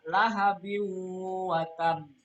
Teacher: Nah, kalau tanwin ketemu dengan waw adalah bacaan idgham bi un. Nah, karena tanwin ketemu dengan waw, maka cara bacanya, hukum bacaannya adalah dengung.